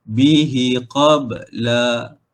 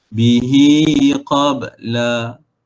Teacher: Tu tak panjang. Dia kena panjang dua harakat, dengung dua harakat. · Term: Mad silah qasirah